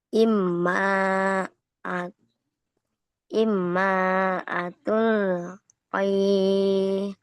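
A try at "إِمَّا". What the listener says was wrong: Jadi itu ditahan tuh. atau berdulung dulu imma. Jadi enggak langsung imma.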